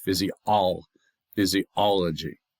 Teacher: The fizz, the e, the o, and the g are not stressed. It's the all.